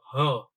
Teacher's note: જો હ એમ બોલો તો હ, એટલે હવા છે શું કરશે? નાદતંત્રી થોડી જગ્યા રહેવાથી તેમાંથી પસાર થાય, એમાં થોડુંક કંપન થશે. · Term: મમર વ્યંજન